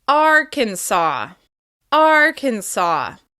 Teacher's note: hold that first syllable and make it longer, louder, and higher in pitch.